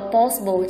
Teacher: possible trọng âm sẽ rơi vào âm đầu tiên